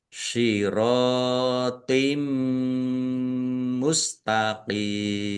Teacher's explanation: Thnya berat ya jangan sama dengan ta · kasroh tanwin bertemu dengan huruf mim, bacaan idgham bi gunnah, masuk dengan mendengung, yaitu mendengung mim Ditandai mimnya ada tasdidnya, ditahan biar tampak mendengungnya.